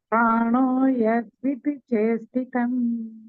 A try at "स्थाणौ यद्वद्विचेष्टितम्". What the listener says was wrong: स्थाणो यद्वद्विचेष्टितम् यद वद दिख नहीं रही, वह छोटा सा है। यद वद विचेष्टितम्।